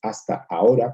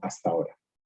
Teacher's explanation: sino hasta ahora, pronunciando una única vocal